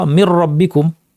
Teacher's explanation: নুনের কোনো গুন্না থাকবে না, কাজে নুন সম্পূর্ণ চলে গেছে, তার কোনো রেশ নাই। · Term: ইদগাম